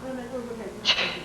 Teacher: Ch has no tone. You should not feel any sounds, any vibration in your throat when you say ch. The tongue touches the ridge behind the teeth, and it's a fast pop.